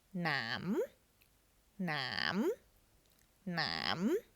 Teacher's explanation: However, remember we need to add the silent H to it. So it becomes nam, nam, nam with a rising tone.